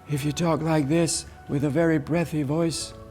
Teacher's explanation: with a very breathy voice, then there's no output in it. There's no vocal quality in it. There's also no tone in it.